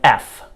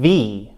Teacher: f is a voiceless sound, meaning that the vocal cords are open